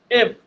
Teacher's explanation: এফ এর sound হচ্ছে ফ, এটা হচ্ছে উপরের দাঁত নিচের ঠোঁট